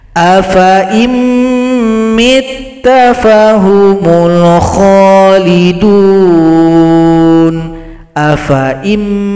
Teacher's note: Berikutnya di sini ada bulat lingkaran, maka sifir mustadir, menghilangkan tanda panjang. Fa dibaca pendek, langsung gabung kepada huruf hamzah yang kasrah.